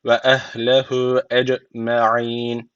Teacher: Cim harfi cezim aldığı için burada kalkale tecviti var. Birazcık vurguluyoruz.